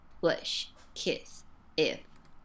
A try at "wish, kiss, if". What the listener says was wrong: almost ends up sounding more like a schwa sound because of that unstressed sound in the voice. So again, practice more space in the mouth, more of that easy, relaxed, loose, flexible jaw drop there.